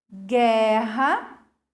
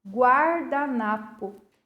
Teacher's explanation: na palavra guardanapo, a vogal U tem som, ela é pronunciada, diferente da vogal U na palavra guerra. Aqui ela não possui som, ok?